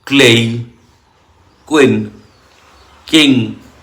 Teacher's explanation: obviously K will be aspired